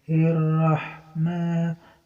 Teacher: Ma panjang, ma tobi'ai. Alif gantung panjang 2 harokat.